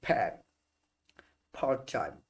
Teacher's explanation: আমরা সাধারণত এদেরকে বাংলায় কি বলি, প, ট, ক এর মতো উচ্চারণ করি, কিন্তু নেটিভ স্পিকার যারা আছে ওরা কিন্তু এগুলো কিছুটা হ যুক্ত করে একটু বাতাস জুড়ে ছাড়ে। ঠিক আছে। যেমন আমরা বলি পি, ওরা বলে ফ, সাথে একটা হ উচ্চারণ হচ্ছে। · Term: অ্যাসপিরেটেড সাউন্ড